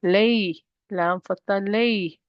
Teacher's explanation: not stretching, pronouncing the ya as a shortened sound. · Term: harf leen